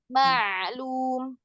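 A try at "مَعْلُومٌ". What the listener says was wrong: Bukan mimnya yang dipanjangin, jangan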